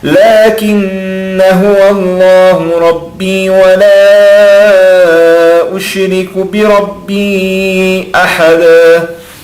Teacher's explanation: A gente faz o idgham, o som nasal, porém não pronunciamos o alif.